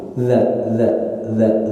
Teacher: ujung lidah kita digigit keluar sedikit jadi kalau kalau kita lihat dari sebelah lidah kita nongol sedikit